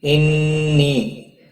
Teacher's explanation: نون مشدد پر غنہ ہوگا، نی مد منفصل ہے، 3 الف کے برابر کھینچ کر پڑھیں گے۔